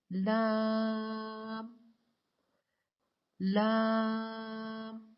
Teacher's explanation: لام کو ادا کرنے کے لیے زبان کے باریک کنارے کو اوپر والے دانتوں کے مسوڑوں سے لگا کر باریک آواز میں پڑھیں۔